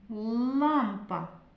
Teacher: У слові лампа звук л твердий. Вимовляємо твердо і позначаємо його однією рисочкою.